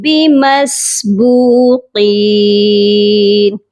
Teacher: با واو پیش بو، اس با کو بھی ہم نے لمبا کر کے پڑھنا ہے کیونکہ یہ واو مدہ کے ساتھ ہے۔ اور قین قاف کو موٹا بھی پڑھیں گے اور یہ یائے مدہ کے ساتھ ہے، اس کو بھی ہم نے ایک الف کی مقدار لمبا کرنا ہے۔